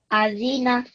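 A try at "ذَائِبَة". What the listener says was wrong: Don't make this the longer. Keep it to short.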